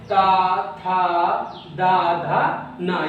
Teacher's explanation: ये हमारे दंत से बोले जाते हैं